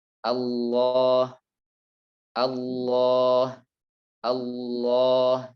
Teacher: untuk pendekatan seperti huruf O. Akan tetapi dengan memperhatikan jangan sampai dimonyongkan bibirnya. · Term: huruf lam tebal